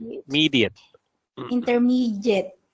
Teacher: I still hear a J sound. It's a D.